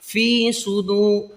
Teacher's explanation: فی کو آپ لوگ نہیں کھینچتے ہیں، تھوڑا سا کھینچنا ہے